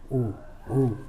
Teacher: वो आपका ओ में है, के ओ, मतलब कंठ प्लस होठ, ओ ओ बोल के देख लीजिए। ओ आपका कंठ भी काम कर रहा है और आपका मुंह भी गोल हो रहा है